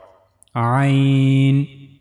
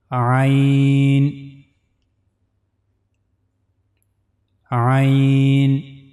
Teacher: One is the upper part of the throat, then the middle part of the throat, and then the bottom part of the throat. So for pronouncing Ain, we have to use the middle part of the throat.